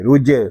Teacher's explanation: جیم ساکن ہے، اس کو کلکلے کے ساتھ ادا کریں گے، رج، اس کو رج نہیں پڑھیں گے، اس کو پڑھیں گے رج۔